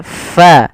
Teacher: adalah ada angin yang dikeluarkan karena fa salah satu sifatnya sifat hames, yaitu mengalirnya nafas kita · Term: huruf fa